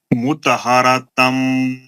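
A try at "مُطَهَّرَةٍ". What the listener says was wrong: मुतहरतम नहीं है, आप भी गलत बोल रहे हैं। आप सब मुतहरतिन गुन्ना करिए ना, 2 ज़ेर है ना वहाँ।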